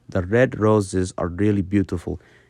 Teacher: You will naturally roll your R very slightly. It's kind of at the tip of the tongue. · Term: gentle R sound